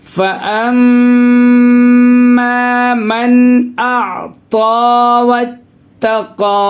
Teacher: نون ساکن کے بعد حروف حلقی کے 6 حرفوں میں سے حمزہ ہے، اس کی وجہ سے یہاں ناک میں آواز بالکل نہیں روکیں گے، نون کی آواز کو صاف ظاہر کر کے آگے بڑھیں گے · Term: اظہار